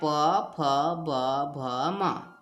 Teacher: पांचवा वर्ग है आपका ओष्ठ वर्ग, उच्चारण स्थान है होंठ, ओष्ठ, और इसके अंतर्गत आते हैं प फ ब भ म।